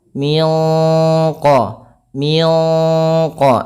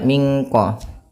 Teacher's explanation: Miqo, ya, tidak mingko. Tapi dia suara nunnya ya disamarkan langsung kepada makhraj daripada huruf qaf yang dia memiliki sifat isti'la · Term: ikhfa